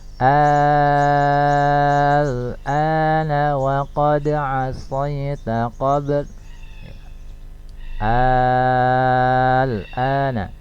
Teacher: Atau bisa juga didefinisikan dengan jika mad asli ya, jika mad asli bertemu dengan huruf yang sukun dalam satu kata, maka ini disebut dengan mad lazim kalimi mukhaffaf ya. Mad lazim kalimi mukhaffaf, cara membacanya harus dibaca dengan panjang 6 harokat